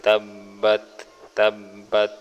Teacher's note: یہاں با کے اوپر تشدید ہے، اس کو 2 بار پڑھیں گے